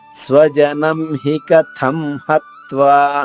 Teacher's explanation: స్వజనం అనుస్వర ఉచ్చారణమా పొల్లుగా. హి కథం, హి కథం 3 హ్రస్వాక్షరాలే, అనుస్వర ఉచ్చారణమా పొల్లుగా.